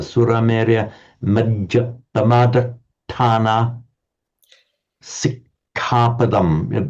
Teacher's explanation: Pamadatthana, strongly double T. Sikkapadam, strongly double K.